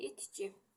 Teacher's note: Baxın, burada Q tələffüzdə çevrildi, oldu G-ya, öz qarşılığına çevrildi. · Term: keyfiyyət dəyişikliyi